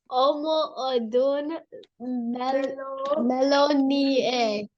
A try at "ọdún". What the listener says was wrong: Ọmọ ọdún mélòó ni ẹ́? That N, the N in ọdún, let's go back. This N is silent. You go ọdún. You don't say ọdún. Ọdún. Ọdún.